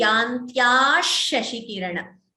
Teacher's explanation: Instead of the visarga, sh comes.